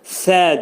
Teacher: Sə hərfi pəltək. Dilimiz iki dişin arasına girir xəfifcə.